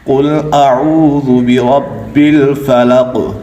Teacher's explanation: یہ قاف موٹا ہے کیونکہ یہ حروف مستعلیہ میں ہے